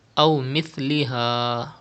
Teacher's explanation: pronounce sa without whistle.